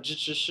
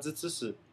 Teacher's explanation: Então, outra sílaba que é um tanto quanto diferente são as sílabas retroflexas, que são zh, tch, sh, as que têm o H, ZH, CH e SH. Em Taiwan, dependendo do sotaque, a pessoa não faz o som tão retroflexo quanto na China. Às vezes até os chineses do sul não têm essa, não capacidade, mas não têm esses sons retroflexos porque os dialetos nativos deles não têm esses sons.